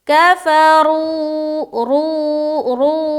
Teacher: یہاں آپ دیکھیں واو ساکن ہے, اس سے پہلے پیش آ گیا, تو یہ ہو گیا وا مدہ, لہٰذا ایک الف کے برابر کھینچنا ہے. کھینچیں گے، را کو موٹا رکھتے ہوئے کھینچیں گے، کفروا، رو رو ایسا.